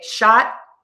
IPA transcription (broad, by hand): ˈʃɑtˌgʌn